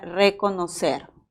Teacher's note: es un vibrante simple porque también hay vibrante múltiple